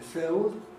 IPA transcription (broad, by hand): fɪəld